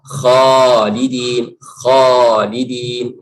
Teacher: huruf kha itu dari tenggorokan. Yang ditebalkan dalam itu bukan bibirnya